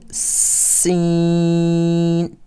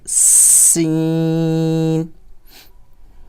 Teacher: تھوڑی سی اس میں سی ٹی کی آواز آنی چاہیے